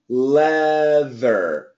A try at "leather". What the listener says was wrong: Keep that TH. The L and the TH can be the same position. Leather. Make the TH long. Ver.